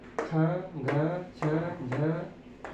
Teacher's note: ऐसे वर्ण जिसका उच्चारण करने में हमें अधिक वायु छोड़ना पड़े उसी को हम क्या कहते हैं, महाप्राण कहते हैं। वर्गों का दूसरा और चौथा और साथ में सल प्रत्याहार जिसको हम उस व्यंजन के नाम से जानते हैं, ऐसे जो वर्ण हैं वो महाप्राण के अंतर्गत गिने गए हैं।